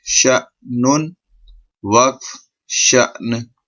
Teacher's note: اب یہاں پہ یہ سکون آ گیا، جزم آ گیا، تو یہ جھٹکے والا حمزہ بن گیا، حمزہ ساکنہ ہو گیا. تو ہم اس کو جھٹکا دے کے پڑھیں گے